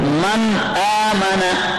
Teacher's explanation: नून साकिन के बाद हर्फ हल्क़ी हमजा आया हुआ है, इस नून साकिन में गुन्ना नहीं करेंगे, इसको जाहिर पढ़ेंगे, यूं पढ़ेंगे मन आमना। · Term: इजहार